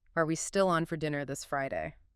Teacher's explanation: It's the primary way we mark yes no questions in English. That rising pitch signals I expect a yes or no answer or I'm seeking confirmation. · That classic upward inflection for a question.